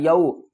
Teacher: وقف کی صورت میں میم کو ساکن پڑھیں گے، الرحمن الرحیم، مالک یوم الدین، میم کھڑا زبر ما، لام زیر لی، مالی، کاف زیر کی، مالکی، یا واو زبر یو، حروف لین ہے، واو ساکن سے پہلے زبر ہے، اس کو ہم جلدی سے ادا کریں گے اور نرمی کے ساتھ